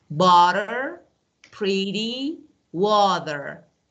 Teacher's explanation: In American English, T, letter T, between two vowel sounds is pronounced like a soft D. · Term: flap T